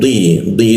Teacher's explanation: posisinya lidahnya itu bertemu dengan geraham bagian bawah ya. Lalu ketika dibacanya di itu ada penekanan dia seperti itu.